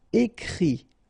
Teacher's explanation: phonetically you pronounce i because final t is not pronounced